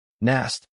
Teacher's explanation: this sounds like na plus a very short U like in but